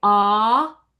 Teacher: we drop that that jaw all the way down because we're just making an ah sound.